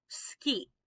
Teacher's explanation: we've got a voiceless vowel there